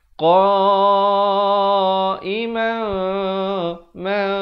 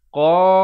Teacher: Mim yang nipis. Iaitu seakan-akan bibir itu hampir bersentuhan saja. Dengan kadar 2 harakat. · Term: Iqlab